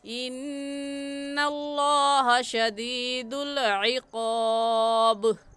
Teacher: इन्ना में नून मुशद्दद है, गुन्ना करेंगे और बा हरूफ कलकला में से है, कलकला करके पढ़ेंगे।